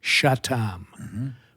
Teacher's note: In Yazidi dialect, they don't use the CH sound. It's the SH sound, like Shatam for Satan.